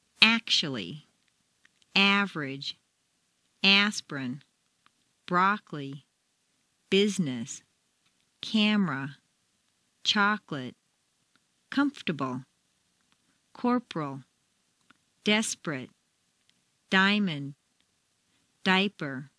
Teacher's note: Intonation can also completely get rid of certain entire syllables. Some longer words that are stressed on the first syllable squeeze weak syllables right out. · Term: Squeezed Out Syllables